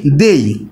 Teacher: দুটি স্বরধ্বনি একত্র হয়ে একই প্রয়াসে বা এক প্রয়াসে উচ্চারণ হয়ে গেছে। তাই আমরা এখানে বলতে পারছি যে এটি হচ্ছে একটি যে একই জাতীয় আমাদের বিসর্ধ্বনি।